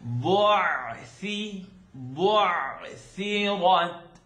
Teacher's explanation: Ayn lives in the second part of the throat. So you're going to open up your mouth nice and wide, clearly.